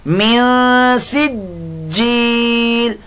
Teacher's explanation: जीम मुशद्दद में कलकला होगा, मुशद्दद कलकला, जमाओ ज्यादा होगा